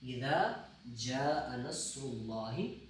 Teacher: جاء کے اوپر مد ہے، دیکھیے مد ہے، یہ مد منفصل ہے، اس کو ہم نے کیا کرنا ہے، 5 الف کی مقدار لمبا کر کے پڑھنا